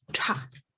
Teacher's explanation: aspirated or with a puff of air retroflex T sound, ta. Next we have ka, rata, ta.